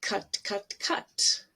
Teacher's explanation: you see how it's short my mouth is very relaxed the tongue is right in the middle not not up not or back but right in the middle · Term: mustard vowel